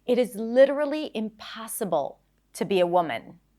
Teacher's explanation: The word impossible is stressed, so you want to try and stretch it a little bit and raise your pitch.